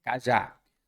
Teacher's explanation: se é cajá a sílaba tônica é a última isso nos deu uma oxítona e se é uma oxítona repare